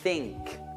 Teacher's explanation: tutta l'aria che esce, qui non vibra niente perché non c'è la nota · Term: TH senza nota